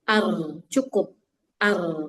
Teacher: Ar itu takrirnya berlebihan. Dia betul punya getaran nama sifatnya takrir cuman sebatas dirinya dia aja. Jangan sampai berlebihan.